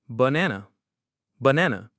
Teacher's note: In America, we stress the middle syllable, banana. So the middle nan is strong and clear. That means the first and last syllables are weak. They are unstressed. And the vowel in those weak syllables, you guessed it, turns into a schwa. · Every A is the same, but that's not the American rhythm. In America, we stress the middle syllable, banana. So the middle nan is strong and clear.